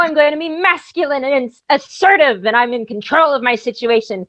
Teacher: i've got false vocal folds coming in to give me a growl